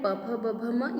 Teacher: स्पर्श व्यंजन में प फ ब भ म ये होठों के द्वारा बोलते हैं। और प और फ क्या है, इसका उपदमान्य, इसकी संज्ञा क्या होगी, ओष्ठ।